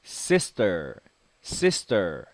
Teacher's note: s t 붙으면 t 발음이 약간 쌍디귿 발음이나요